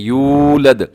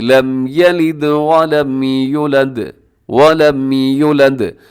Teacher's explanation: اب اس کو لمبا کرنا تھا کیونکہ واو ساکن سے پہلے جب بھی پیش ہوتی ہے واو مدہ ہوتی ہے، اس کو لمبا کرتے ہیں